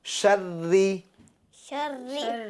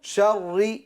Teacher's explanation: باقی مکمل جواب یہ ہے کہ را مشدد پر زبر یا پیش ہو تو را کو پر یعنی موٹا پڑھیں گے، اور را مشدد کے نیچے زیر ہو تو را کو باریک پڑھیں گے